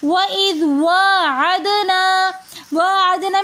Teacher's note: دال حرف قلقلہ میں سے ساکن حالت میں آ رہا ہے تو اس لیے دال کے اوپر قلقلہ کریں گے